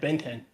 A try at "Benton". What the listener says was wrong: Yes, but you put the wrong emphasis. He put the emphasis on the wrong syllable.